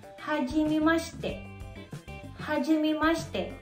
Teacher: Kung mapapansin nyo, nawala yung letter I. Ang tawag doon ay vowel devoicing.